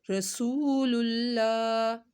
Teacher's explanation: لفظ اللہ کو موٹا پڑا جائے گا کیونکہ اس سے پہلے پیش ہے ، للہ، رعوف، رعوف الرحیم، او کو لمبا کیا، واو ساکن